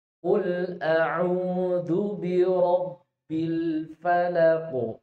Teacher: Qul pakai qaf, jangan dihembuskan kul enggak, tapi dalam.